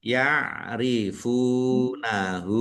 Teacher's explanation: Fa domah wawu sukun, mat tobi'i, panjang 2 harokat. Domir ha, domah terbalik, ini mat silah qosiroh. Dibaca panjang 2 harokat, sama dengan mat tobi'i.